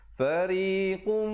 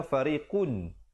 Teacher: tanwin bertemu mim idgham bi gunnah masuk beserta dengung. Asalnya fariqun.